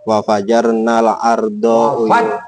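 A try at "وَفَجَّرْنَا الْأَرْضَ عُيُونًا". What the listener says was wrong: Fajarna tasdid jimnya, bukan wa fajarna, wa fajarna. tekankan kalau tasdid. Namanya kok tasdid? Sangat namanya kan.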